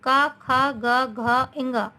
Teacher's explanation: का वर्ग के व्यंजन है ये कंठ से मीन्स गले से बोले जाते हैं